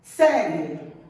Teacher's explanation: Na fala, a gente fala tão depressa que esse I, ele é tão fraquinho que ele desaparece. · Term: semivogal